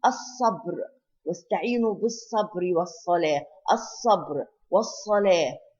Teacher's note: Here we do not pronounce the lam of الصبر, and we do not pronounce the lam of الصلاة. So this is شمسية. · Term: lam شمسية